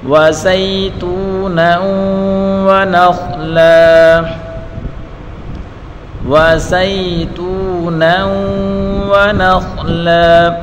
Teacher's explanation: زا یا زبر سی یا لین ہے, اور تا واو پشتو واو مدہ, اس کو ایک الف کی مقدار کھینچ کر پڑھیں گے. وزیتونا ونخلا, نون کو واو کے ساتھ ملا کر پڑھیں گے. ادغام کا قانون ہے, واو کے اوپر پڑھی حرکت ہے, بغیر کھینچے پڑھیں گے.